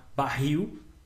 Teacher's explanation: Então, barril, il é a última, é a mais forte, ela é uma oxítona